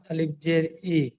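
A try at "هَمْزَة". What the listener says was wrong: আলিফ না, হামজা জের ই।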